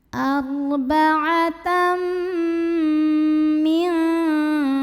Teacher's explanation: Maka tanwin fathahnya lebur atau masuk ke mim. Arba'atam bunyinya M dan dengungkan, tahan. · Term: idgham bi gunnah